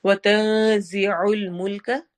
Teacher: वतज़िउल मुल्क, त में नून की आवाज को छुपाएंगे, जी जा में सिटी वाली आवाज आएगी